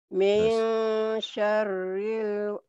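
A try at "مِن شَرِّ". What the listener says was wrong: Iya, barisnya kehilang ini. Ini kan ada kasrohnya ini. Nih, min syarril. Di sini ada kasrohnya nih, ada barisnya ya. Min syarril, ya.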